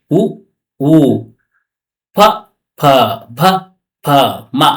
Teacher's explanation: ಓಷ್ಟ್ಯ, ತುಟಿಯ ಸಹಾಯದಿಂದ ಹುಟ್ಟುವ ಏನು ವರ್ಣಗಳು